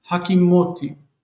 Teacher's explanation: But it's more common in the Bible to take the whole thing and add an ot syllable inside of it before you add or an o syllable inside of it before adding the t. So hakim, the first syllable reduces to ha because the stress moves, and it becomes hakimoti.